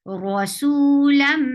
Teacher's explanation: idgham with gunna, you're keeping the sound in your nose and merging this tanween into meme. Rasulam, this is gunna.